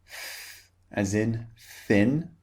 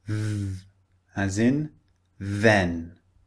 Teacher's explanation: The first one is unvoiced. Put your hand over your throat. And the second one is voiced. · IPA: θ and ð